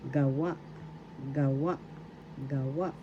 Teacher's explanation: First syllable ga, second syllable wa. The accent is in the second syllable wa.